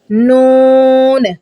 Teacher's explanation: जुबान का किनारा ऊपर वाले दांतों के मसूड़ों को लगेगा तो नून अदा होगा